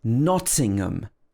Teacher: it's not pronounced with ham it's um at the end nottingham again the first syllable is stressed nothing um so again